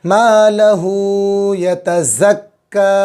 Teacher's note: بہت سے لوگ جو ہے چھوٹا کاف کو بڑا کاف کی آواز نکالتے ہیں.